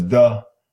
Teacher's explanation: that is a final consonant deletion that means the final consonant of the word is deleted